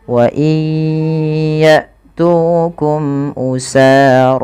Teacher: yaitu terjadi ketika ada nun sukun bertemu dengan huruf ya. Maka masukkan nunnya kepada huruf ya dan ditahan. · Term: idgham bigunah